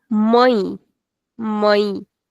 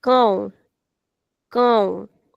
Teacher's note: So this accent gives a nasal sound to these two vowels, a and o.